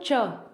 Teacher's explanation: तालु से यानी की ऊपर वाले भाग से मुख्य कंठ से थोड़ा आगे होता है तालु